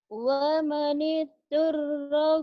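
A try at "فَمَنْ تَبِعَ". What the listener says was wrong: bukan wa, fa. Enak aja wa, fa.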